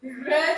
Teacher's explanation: जब आप कहेंगे तो आपकी जीवा के अंदर एक कंपन होगी, एक लुंठित होगा, एक कंपन, वाइब्रेशन या प्रकंपित, कुछ भी आप इसको कह सकते हैं।